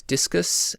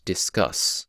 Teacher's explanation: discus has the stress syllable and then unstressed and then discuss has unstressed and then stressed